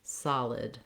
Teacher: So solid has first syllable stress, and the O says ah. In the dictionary, you'll see a little lowercase a representing that vowel sound ah.